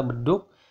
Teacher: Kemudian G biasa saja, tetapi lagi-lagi untuk G tertutup sama seperti B dan D tertutup, dia akan berubah menjadi K tertutup. Karena jika memang dia posisinya di belakang, seperti kata beduk, bunyi G-nya akan mirip ke K tertutup. Beduk gitu ya, gudak padahal belakangnya G.